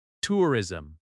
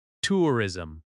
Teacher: Make sure the first syllable is clear and strong.